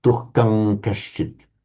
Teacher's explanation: I think you pronounce that as an M, M for Mike. Because it's the anuswara followed by a k, it would have a m sound.